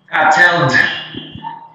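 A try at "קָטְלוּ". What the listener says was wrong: Ooh, ooh. This one is ooh.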